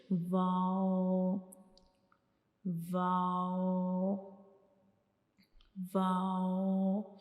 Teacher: जैसे कि वाओ वाओ वाओ तो दोनों होठों की मदद से हमने एक सर्कल बनाना है दोनों होठों को आपस में मिलाए बगैर। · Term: वाव का मखरिज